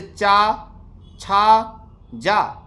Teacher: जब बोलते हैं तो जीभ तालु से जाके टकराती है। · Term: तालव्य